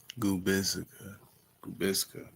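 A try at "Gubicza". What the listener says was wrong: No, the C is silent, so it's Gubiza.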